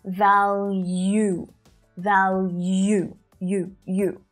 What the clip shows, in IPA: ˈvæljuː